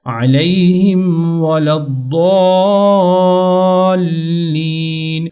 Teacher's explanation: ضاد کے بعد یہ جو الف مدہ ہے اس کے اوپر اچھی طرح سے مد کرنی ہے، موٹا کرنا ہے ، لین، اس کو بھی تھوڑا آپ نے لمبا کرنا ہے۔